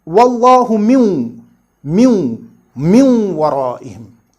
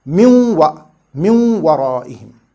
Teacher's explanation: See here, we read Wallahu min waraihim, right? So we merge this noon saakin into the letter waw next to it, and this waw is read twice, min waraihim.